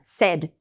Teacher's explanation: E o said é o E de Eva. Said. Boca um pouco mais fechada.